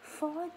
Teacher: mình đẩy mạnh âm tiết thứ nhất và hạ giọng âm tiết thứ hai